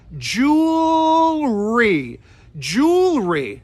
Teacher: stress on that first syllable and what's tricky about it is you have to go up to the L and then you got to push the r